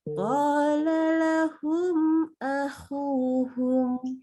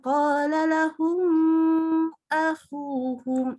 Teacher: Mimnya kita baca jelas, nggak boleh ditahan. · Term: Idhar syafawi